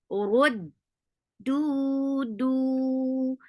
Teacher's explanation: Dal has a sharp sound. There is no flow of sound. The sound will cut off there and then. Rud, do. For dhamma, circular lips, make it 2 counts long.